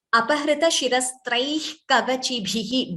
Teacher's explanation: Bha Mahaprana should be clearer.